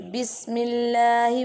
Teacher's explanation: seen like a whistle sound